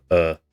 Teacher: the area where the vowel is pronounced moves towards the middle of the mouth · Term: reduction of unstressed vowels